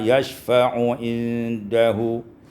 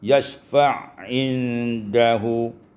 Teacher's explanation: Pada ayat 255, yashfa'u indahu, idghamul ain fil ain, diidghamkan ain pada ain sehingga kita baca yashfa'indahu.